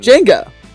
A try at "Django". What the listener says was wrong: He's not saying his O's quite.